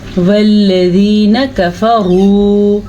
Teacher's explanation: रॉ को पुर पढ़ना है क्योंकि रॉ के ऊपर पेश है।